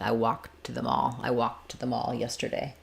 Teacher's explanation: Or in walk to, where you're not going to really hear that K, it's going to be unreleased